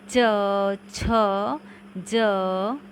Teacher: जिन व्यंजनों का उच्चारण तालु से होता है उन्हें तालव्य व्यंजन कहते हैं।